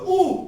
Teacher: जब बोलो ऊ तो ऊ में जीभ पीछे चली गई। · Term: पश्चिम स्वर